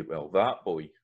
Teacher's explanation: So you can hear that's got an ah sound when you're saying that, when you're using it indicatively.